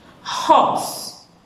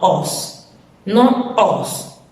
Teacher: Okay, with an aspiration. Sentite come pronuncio la mia H con l'aspirazione.